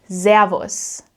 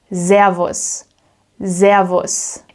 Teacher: Zavos with a soft s sound which means it's a buzzing sound more like the English zed